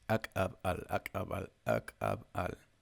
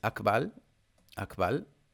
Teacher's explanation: You just like cut with your throat to make a space. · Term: glottal accents